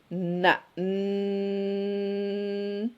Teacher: Ujung lidah ke langit-langit lebih luar daripada langit-langit huruf lam disertai dengan gunnah ya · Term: nun